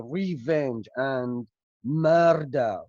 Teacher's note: Okay, so that is why these words, murder and revenge, are stressed so much, stressed with a very high intonation, rising intonation, in fact